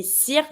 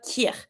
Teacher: You're going to pronounce the C not as a K sound anymore, but as a S sound.